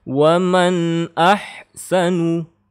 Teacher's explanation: Nun sukun bertemu alif, ini adalah izhar, maka bacanya jelas. Tidak boleh dengung, tidak boleh gunnah, tidak boleh panjang.